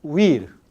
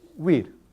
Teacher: En habla formal es una vocal. Pero en habla rápida ya no es una vocal, sino es una consonante fricativa.